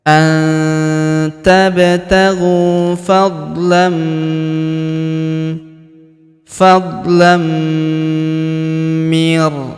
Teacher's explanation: Fadlam tanwin an huruf l bertemu huruf mi berharakat tasydid. Maka tanwin annya melebur ke huruf mi. Kita tahan dan kita tekan serta kita dengungkan dua sampai harakat.